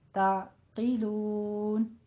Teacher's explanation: قوف کو پر پڑھیں گے اور آگے نون میں مد عارض وقفی کریں گے